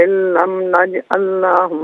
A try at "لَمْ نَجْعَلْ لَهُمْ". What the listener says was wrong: لم نجعل لهم، لاہم نہیں، لہم من دونها سترا۔ جزاک اللہ خیر۔ السلام علیکم۔ السلام علیکم۔ میری آواز اب تک پہنچ رہی ہے؟